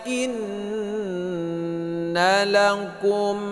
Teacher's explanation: ini gunnah ya, berdengung 2 harakat.